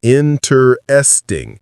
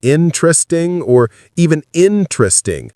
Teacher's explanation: Native speakers say it with three syllables, interesting or interesting. The middle syllable gets compressed or sometimes disappears completely. We don't say interesting.